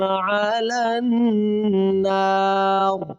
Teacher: لام کو نون کے ساتھ ملائیں گے